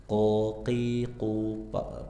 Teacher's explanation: qo qi qu pangkal lidah bagian atas